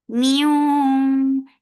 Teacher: Idgham with gunna, so keep the sound in your nose for a longer time.